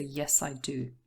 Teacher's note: you always stress the yes or no and then also the auxiliary but only because this is a short answer and there's no main verb following okay so yes i do